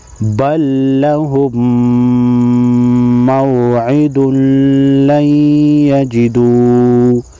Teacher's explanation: میم مشدد پر ہمیشہ غنہ ہوتا ہے، یہاں پر نون ساکن ہے، نون ساکن کے بعد حروف یرملون میں سیاہ ہے، تو یہاں پر ادغام مع غنہ ہوگا، یعنی غنہ کے ساتھ ساتھ ادغام ہوگا